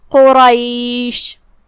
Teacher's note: شین کی ادائیگی زبان اور اوپر کے تالوں کے درمیان سے ہے، لہذا اس کا دھیان رہے، ہم شین کو وہیں سے پڑھیں گے اور اسے ظاہر کریں گے. · قاف کی ادائیگی زبان کے جڑ اور تالوں کے نرم حصے سے ہے. قاف حروف التفخیم میں سے بھی ہے، تو ہم اسے بھاری آواز میں پڑھیں گے. · جو کہ اس کے بعد حرف الرا ہے اور اس پہ زبر ہے، تو را کا بھی حکم ہے تفخیم. ہم قاف کو اور را کو دونوں کو بھاری آواز میں پڑھیں گے